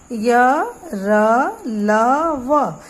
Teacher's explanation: अंतस्थ व्यंजन में प्राणवायु मुंह में कहीं स्पर्श नहीं करती, यानी मुंह के किसी भी हिस्से को छू कर नहीं निकलती, ना ही रगड़ खाती है।